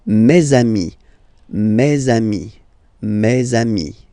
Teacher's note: let's be purist and make this beautiful liaison between these two words